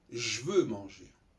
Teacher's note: vous avez le J et le V qui sont collés l'un à l'autre. Donc là, le E, en s'éclipsant, va permettre la jonction entre, j'allais dire la conjugaison, au sens strict du terme, entre deux consonnes.